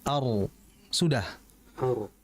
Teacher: Kemudian nanti akhfi diringankan dikurangi getarannya jadi ar.